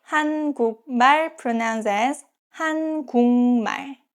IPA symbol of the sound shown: 한궁말